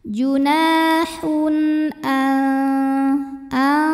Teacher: huruf tenggorokan yaitu Hamzah hamzahnya Alif dengan harakat fathah ya maka tanwinnya ini kita bunyikan dengan jelas jadi masih bunyi n dan tidak perlu ditahan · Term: izhar halqi